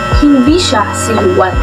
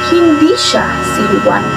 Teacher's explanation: Sa pangungusap na ito, may antala pagkatapos ng salitang hindi.